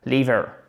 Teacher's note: le couperet, il tombe sur la première syllabe